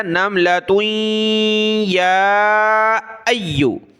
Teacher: تا کو آگے یا کے ساتھ ملایا